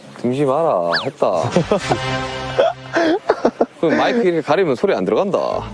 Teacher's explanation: wave-like intonation, so it goes up and down, well, much more rapidly than what's known as 표준어 or standard Korean